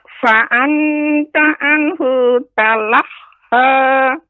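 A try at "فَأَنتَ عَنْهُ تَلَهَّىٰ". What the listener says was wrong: Kemudian Nek, fa'alta, ikhfa-nya harus lebih dijelaskan lagi Nek. Maksudnya lebih ditampakkan ikhfa-nya. Ya, jangan membacanya fa'anta dengan menempelkan lidah ke langit-langit. Makanya seperti nunnya bertasydid. Fa'anta.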